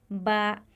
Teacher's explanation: दोनों होठों के बंद होने से अदा होता है